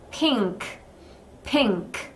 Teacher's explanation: 핑크 하고 응 소리 콧소리를 좀 넣어 주셔야 됩니다. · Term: NG 소리